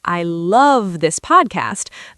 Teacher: What if you stress a different word? If I say I love this podcast, the stress is on love. · the stress is on love. Now I'm showing very strong emotion.